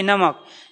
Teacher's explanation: नाक और मुख दोनों से एयर निकलेगी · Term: अनुनासिक